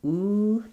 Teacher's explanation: That vowel is tense and round. Ooh. The back of my tongue is very high. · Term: new shoe vowel